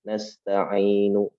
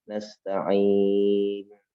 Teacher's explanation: Bukan lagi nasta'inu, tapi nasta'in. Maka menjadi mad arid bisukun. Boleh 2, nasta'in.